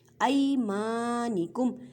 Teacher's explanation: یا ساکن سے پہلے زبر ہے تو یا لین کا قاعدہ کریں مینس کے نرمی سے پڑھیں